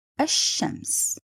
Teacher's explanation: If the letter has شدة, so in this case you will figure out directly you are having لام شمسية, which in other words you need to write it but not to pronounce it.